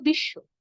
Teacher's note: শব্দের শেষে ব যুক্ত থাকার কারণে যে ধ্বনির সঙ্গে ব যুক্ত হয়েছে আমরা সেই ধ্বনিকে দুইবার করে উচ্চারণ করব